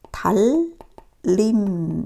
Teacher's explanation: 니은이 유음, 리을의 앞에서나 뒤에서 리을로 교체되는 현상이 있어요